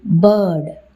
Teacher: This particular type of vowel is called the central vowel, and we have examples for central vowels in English. The long sound that you find in bird, the sound in bird is an example for a central vowel